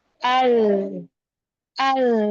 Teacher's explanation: Karena lamnya ini dibaca izhar, dibaca jelas. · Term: izhar qamari